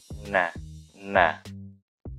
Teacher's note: ujung lidah dengan langit-langit sedikit di bawah makhraj lam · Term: huruf nun